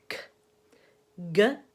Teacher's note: all of them require the back of the tongue to lift just like on a dark L